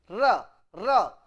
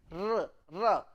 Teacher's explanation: tip of the tongue touches the upper cavity and it vibrate, r, ra. So, it is trill.